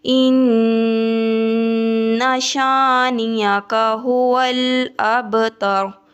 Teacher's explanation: با کے اوپر قلقلہ ہے، اس کو تھوڑا سا ہلا کر با کو پڑھیں گے